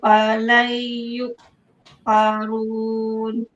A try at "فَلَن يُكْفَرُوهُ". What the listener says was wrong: Bukan yukfarun, yukfaruh. Ada ha di hujung tu.